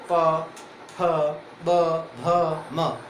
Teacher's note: जैसे आप बोलो प ह ब भ म, तो आपका होठ आपस में क्या दोस्तों? चिपकेंगे। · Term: ओष्ठ्य व्यंजन